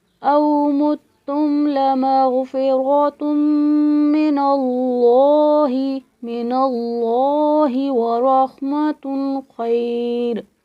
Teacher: لفظ اللہ کے لام سے پہلے زبر ہے تو اس کو ہم نے موٹا پڑھنا ہے، جیسے او متم لمغفرۃ من اللہ ورحمۃ خیر۔